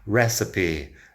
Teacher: Fíjate que esta E al final parece que debería ser silenciosa, pero no. Recipe. Muchas veces si tenemos una E al final de la palabra después de una consonante, no suena.